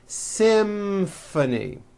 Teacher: this is a tricky one because you've got the M sound followed by an F sound